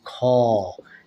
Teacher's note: ক যদি আমরা উচ্চারণ করি এর ভিতর দেখুন অ লুকিয়ে থাকে